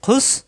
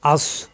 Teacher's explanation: খুসরা সিন শক্ত আর সদ মোটা